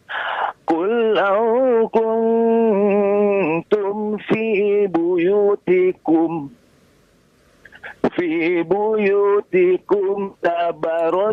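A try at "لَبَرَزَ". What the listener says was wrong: La, ada la-nya. Ada lamnya, Pak.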